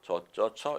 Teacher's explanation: 저처 이렇게 단모음으로 발음하는 겁니다.